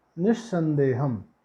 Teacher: अब यहाँ विसर्ग के बाद दंत सा है, तो विसर्ग को क्या हो जाएगा, दंत सा हो जाएगा, तो निस्संदेहम क्या बना, निस्संदेहम।